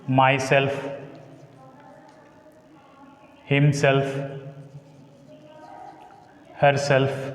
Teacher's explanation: every word ends with the self and takes stress on the S.